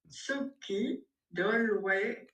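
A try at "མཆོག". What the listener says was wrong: Alors là, ça marche pas. Là, ça marche pas. Parce que tso, non, c'est pas ce que c'est pas tso, c'est cho, cho, cho, cho. Parce que ça, c'est un contresens. C'est-à-dire, moi, quand j'entends tso, j'entends assemblée. Cho, c'est sublime. Donc, j'entends quelque chose de différent, on est d'accord.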